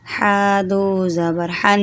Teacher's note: اب آپ کو پتہ ہے میں غنہ کر رہی ہوں، کیسے کر رہی ہوں، دیکھیں ناک میں آواز جا رہی ہے نا